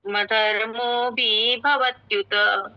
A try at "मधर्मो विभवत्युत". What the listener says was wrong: मधर्मो भी पर लंबा नहीं करना है क्योंकि ये भी छोटा है तो इसको ऐसे बोलना है, धर्मे नष्टे कुलम कृत्स्न मधर्मो विभवत्युत।